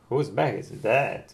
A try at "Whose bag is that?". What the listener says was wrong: That. Ты знаешь, что сейчас сделал? У тебя челюсть вот так бамс пошла. Вот это оно. Whose bag is that?